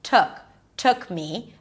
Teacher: Me is lower in pitch because me is less stressed.